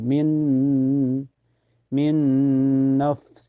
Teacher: Huruf idgham bigunnah ada 4 ya, yaitu ya, nun, mim, waw. Cara bacanya nun sukunnya dimasukkan ke nun dan ditahan sampai terasa ke hidung.